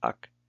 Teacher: In final position, it acts a little bit like a consonant in the case of the change from glottal stop to k in the coda with first person singular inflection